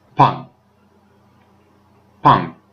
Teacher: And then to pung, it is a falling tone, so it's pung.